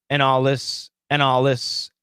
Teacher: so the n killed the d the l is a strong sound the l killed the th